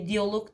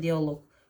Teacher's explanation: dialoq deyirəmsə, dialoq, vurğu loqa düşəcək